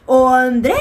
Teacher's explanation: Dre é a sílaba tônica